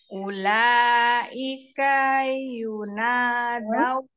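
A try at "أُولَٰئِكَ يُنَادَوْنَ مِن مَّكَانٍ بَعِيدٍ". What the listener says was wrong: Kanya jangan keseret, pendek.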